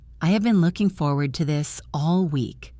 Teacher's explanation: Did you copy the stress on the word looking? Did you copy the rising intonation at the end?